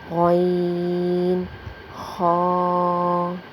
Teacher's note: شروع حلق سے ادا ہوتے ہیں، یعنی اوپری حلق سے، جو حلق کا شروع حصہ ہے۔ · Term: حروف حلقی